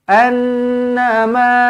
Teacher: Nun sabdu dengungkan dua harakat wajibul ghunah